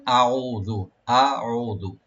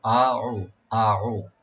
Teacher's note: হামজার মাখরাজ হলো গলার শেষে, আর আইনের মাখরাজ হলো গলার মধ্যখান থেকে আসে।